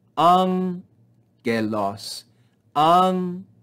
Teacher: we have no breathing on this first sound, and we rise in pitch on this first syllable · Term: acute accent